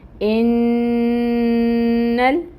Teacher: اب اس نون کو لام کے ساتھ ملانا ہے۔ انل، اب یہاں پر اس نون کو ہم اس لام کے ساتھ ملائیں گے، ٹھیک ہے، اور لام کو ہلائیں گے نہیں۔